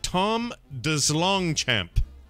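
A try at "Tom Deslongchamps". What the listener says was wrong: I bet you don't pronounce the S. I bet it's Tom DeLongchamp.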